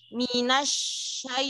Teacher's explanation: Pada ya sukunnya itu dia ada hukumnya lin, jadi harus dilembutkan.